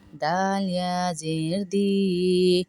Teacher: یا کو اس لیے کھینچ رہے ہیں یا مدہ ہے